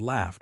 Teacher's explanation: The gh sounds like f. F is unvoiced.